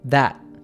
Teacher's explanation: The word that has a glottal T